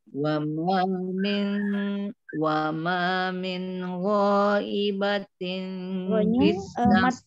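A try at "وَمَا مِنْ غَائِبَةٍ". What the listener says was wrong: Mat wajib afwan. Itu ya. Mat wajib hasil. Jadi harus dibaca panjang. Ya. 6 harakat.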